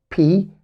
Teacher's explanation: حرف ال P followed by a puff of air تبع بنفخة هواء كده. لو أنت حطيت إيدك كده in front of your mouth قدام بقك وقلت P P هتحس إن في نفخة هواء طلعت من بقك، فعشان كده بسميها بي تقيلة، يعني تقيلة في النطق.